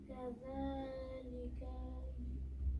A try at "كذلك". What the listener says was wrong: Don't do the mud there.